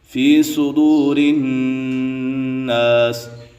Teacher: ناس پہ بھی نون مشدد ہے، اسی وجہ سے یہاں بھی غنہ ہوگا